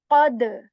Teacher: The sound is bouncing back on letter dal because this dal is from the letters of kalkala